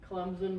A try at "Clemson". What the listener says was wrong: You're saying like CLEMZIN. It's